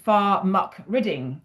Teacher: that ch sound has been replaced with a hard C- sound